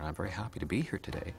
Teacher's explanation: a Canadian has a very gentle drifting up pattern